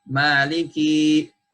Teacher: Apabila huruf tersebut ditambah pada huruf kaf, ditambah ya menjadi mad, menjadi maliki, menjadi panjang